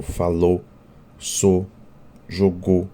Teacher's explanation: praticamente nós não pronunciamos o ditongo ou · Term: monotongação